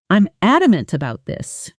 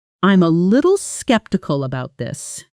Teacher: When someone says, "I'm adamant about this," listen to how the voice rises slightly on adamant and stays firm, almost flat, no uncertainty in the pitch. Compare that to skeptical, where the voice often has a slight upward lil at the end, almost like a question, even though it's a statement. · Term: Firm, flat, no rising pitch